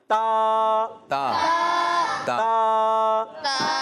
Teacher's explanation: ता का मखरज है जबान का सिरा, जबान का, और ऊपर के दांतों की जड़ों से